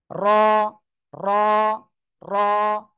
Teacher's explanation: জিহ্বার পিঠ তার বরাবর উপরে তালুর সঙ্গে লাগিয়ে মোটা আওয়াজে উচ্চারণ হবে